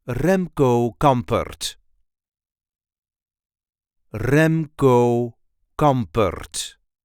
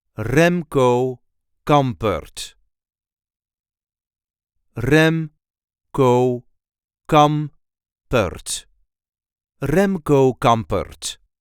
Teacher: There is a light emphasis on the first syllable of his first and second name.